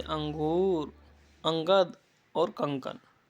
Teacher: अब अनुस्वार के बारे में बताया गया है। यह स्वर के बाद आने वाला व्यंजन है जिसकी ध्वनि नाक से निकलती है